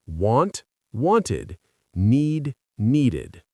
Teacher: The only exceptions are words which end in t and d, which are pronounced id and add an extra syllable to the word.